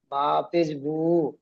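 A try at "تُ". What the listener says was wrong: বা নেই ওখানে, নেই নেই, তা পেশ তু আছে, আ ইয়া তুহু।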